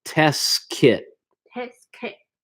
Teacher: The T, the second T in test, I'm almost not pronouncing it.